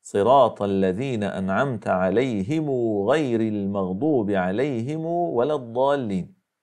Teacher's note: روايه قالون عن نافع وغيره حيث يروون ميمات الجمع موصوله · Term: صله ميم الجمع